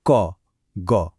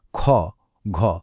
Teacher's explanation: অল্পপ্রাণ মানে হলো উচ্চারণে কম বাতাস লাগে, যেমন বলুন ক, গ। আর মহাপ্রাণ মানে উচ্চারণে অনেক বেশি বাতাস বের হয়, যেমন খ, ঘ।